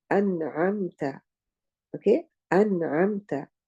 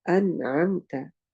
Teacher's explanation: here the noon sakin is followed immediately by the letter ain. So what I do, I make the sound of the noon very clear. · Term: idhar